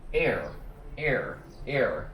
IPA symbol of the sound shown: er